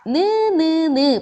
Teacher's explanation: 혀 끝이 윗, 이와 잇몸에 닿아요. 그럼 잇몸 소리입니다.